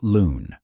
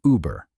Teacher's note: A rounded front vowel. The sound that French still writes as u in words like lune. The sound that German writes as u in words like über.